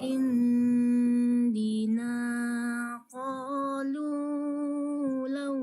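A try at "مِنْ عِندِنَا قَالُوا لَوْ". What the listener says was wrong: Nah, jangan panjang-panjang, dua saja.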